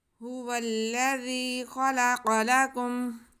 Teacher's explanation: هو الذي خلق لكم، جی ہاں پہ پیش ہے، واؤ پہ زبر ہے اور آگے لام مشدد ہے۔ واؤ کو لام کے ساتھ ہم ملائیں گے، تو کیونکہ لام پہ شد ہے تھوڑا رک کے ہم ملائیں گے۔ · پہلے تو ہم ذال کو بہت نرمی سے پڑھیں گے، اس کے بعد یا مدہ ہے، ذال کے آواز کو ہم کھینچیں گے، ایک الف کے برابر کھینچ کے پڑھیں گے۔